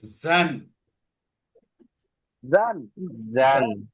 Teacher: জিহ্বার আগাটা নিচের দুই দাঁতের পেট ও আগাতে লাগবে। নিচে যে দুইটা দাঁত আছে ওই দুই দাঁতের মাঝখান এবং আগার সাথে লাগবে।